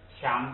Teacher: 它是升降调嘛，如果它在第一个音节不许降，所以它就变成升调